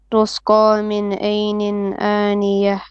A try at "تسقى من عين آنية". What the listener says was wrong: So two problem here. One, don't say tus. If you say tus, you're making the scene also heavy. It's tus. The scene has to be flat. Tus qa.